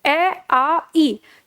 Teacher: हमारे होठ किसी में भी गोलाकार नहीं हुए हैं। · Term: आवृत्त मुखी